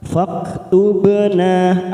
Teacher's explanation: Wattaba'nar rasulah, kita langsung masuk pada huruf fak, ada huruf fa, ya, bertemu dengan kaf sukun. Faktubna, ada ba sukun qalqalah sugro karena mati dengan kalimat, jangan lupa kita pantulkan tubna, fathah diikuti alif 2 harokat.